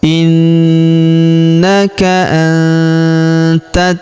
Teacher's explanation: maka nun sukunnya melebur ke huruf ta. Kita baca dengung dan samar, dengungnya kita tahan 2-3 harokat.